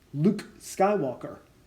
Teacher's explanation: Luke Skywalker has sharper sounds at the beginning with that triple repeat of the K sound